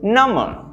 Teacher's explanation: notice the missing b there right the b sound is not there but it's still spelled number what does this mean well this